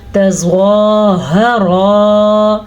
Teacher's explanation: زوا کو میں نے پر پڑھا کیونکہ زوا کے اوپر کھڑی زبر